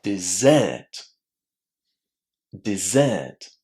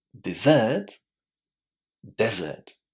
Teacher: Stress on the first syllable and the vowels are much shorter inside this word.